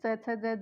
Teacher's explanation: ये बोलकर देखिए हमारी जिह्वा कहाँ जा रही है? तालव्य पर जाकर टकरा रही है।